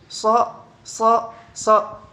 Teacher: huruf so keluar daripada bunyi lamino palatal atau daun lidah langit-langit atas. Sedangkan dan juga keluar daripada oral atau mulut.